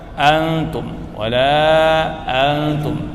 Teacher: Antum nun mati setelahnya ta. Ya, didengungkan